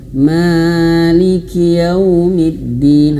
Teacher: kadang kalau membawa irama, ma-nya ini kepanjangan